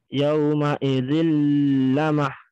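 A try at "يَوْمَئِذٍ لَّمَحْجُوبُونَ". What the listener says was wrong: Itu masih ditahan tuh.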